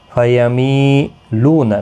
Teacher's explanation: मी या मद्दा है, लू वाव मद्दा है, एक एक अलिफ की मिकदार के बराबर खींच कर पढ़ेंगे